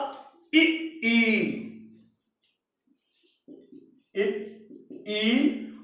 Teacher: संव्रत अथवा ऊंचा स्वर, जिब्या को जितना हो सके, जितना भी हो सके ऊंचा रखें, तालु के तरफ ले जाए